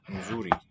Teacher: Nzuri, I think, is a pre-nasalized fricative. probably best regarded as a single sound, just a complex segment.